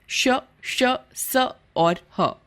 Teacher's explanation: कुछ व्यंजनों का उच्चारण करते समय हवा मुख के विभिन्न भागों से रगड़ खाती हुई बाहर आती है व्यंजनों की ध्वनि में इस प्रकार की रगड़ से गर्मी उत्पन्न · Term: ऊष्म व्यंजन